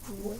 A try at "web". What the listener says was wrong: You said wed again. W eb web web.